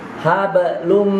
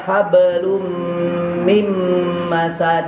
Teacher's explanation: Mimnya itu huruf idgham. Jadinya suara tanwinnya itu masuk ke dalam suara mim